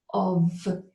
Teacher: Off would be O-F-F. This word is of, a V sound with your vocal cords vibrating.